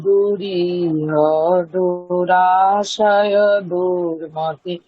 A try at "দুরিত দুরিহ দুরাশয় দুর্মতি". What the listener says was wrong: আপনি হতে গিয়ে পজ করছেন একটা, ওখানে কোনো পজ হবে না, যেহেতু হ্রস্ব, পরের দুটাও হ্রস্ব, তাহলে হয়ের পরে ইমিডিয়েট তাহলে দুরিতা দুরিহা দুরা, এইভাবে দুরিতা দুরিহা দুরা, এইভাবে চলবে।